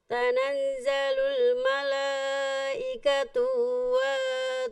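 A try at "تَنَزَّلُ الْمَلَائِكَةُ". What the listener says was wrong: Tu-nya nggak panjang. Tanazzalul malaikatu.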